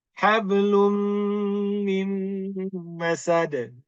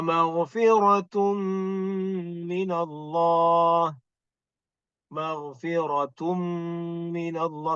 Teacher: So mim dan nun musyaddadah kena dengung ya, dengung.